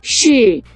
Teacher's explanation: el cuarto tono es como si dieras un grito de kung fu.